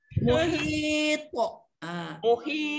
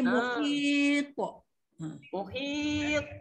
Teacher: Tak ada sabdu tapi to tu kuat.